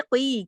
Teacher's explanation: قاف کو موٹا بھی پڑھیں گے اور ایک یا مدہ کے ساتھ بھی ہے